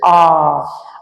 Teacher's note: आ जब बोलते हैं तो पूरा मुख खुल जाता है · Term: विवृत